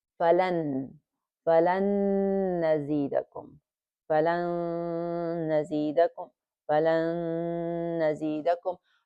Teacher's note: So this is the area that we have a merging that is complete merging, meaning everything gets merged completely, mixed completely. And by holding it for 2 beats or for 2 counts, then we have bighunna, meaning that the nasal sound will come out